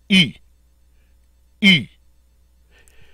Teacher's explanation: it's a long e sound spoken through rounded lips